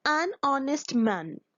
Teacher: Honest is a word that starts with H, but in that word H is silent, so the sound is of vowel.